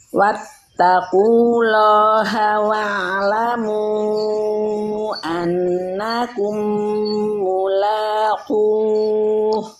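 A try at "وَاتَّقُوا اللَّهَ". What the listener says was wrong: Wattaqullah. Tebalkan Bu, lafaz awalnya tebalkan Bu. Wattaqullah, gitu.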